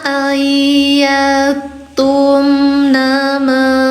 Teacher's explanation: Wala yahillu lahunna ayyattumna ma. A-nya ada dua, dibaca panjang dua harakat karena ada fatah bertemu dengan alif